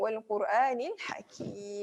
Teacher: Ha ni dia kena tekan di tengah kerongkong. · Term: ha pedas